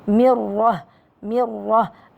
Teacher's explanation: الميم مرققة. الراء جاءت مفخمة لأنها مفتوحة